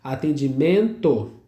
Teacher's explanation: Dígrafo em atendimento, né? O N quase que não é pronunciado.